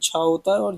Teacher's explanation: question number 5 है कि चा वर्ग में महाप्राण व्यंजन वर्ण